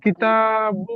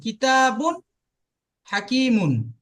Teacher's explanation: তানবিনের আওয়াজ নাকের মধ্যে হয়, তো আপনি তানবিনের আওয়াজটা নাকের মধ্যে দিয়ে বলবেন তো